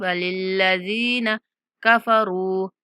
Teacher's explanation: ज़ाल के बाद या मद्दा है, ज़ाल को थोड़ा खींचेंगे। वलिल्लज़ीन कफ़रू, यहाँ रा के बाद वाव मद्दा है, कफ़रू, वलिल्लज़ीन कफ़रू बिरब्बिहिम, बिरब्बिहिम, रा को पूर पढ़ेंगे।